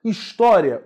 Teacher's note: O I é semivogal porque ele não traz a sua máxima intensidade de pronúncia.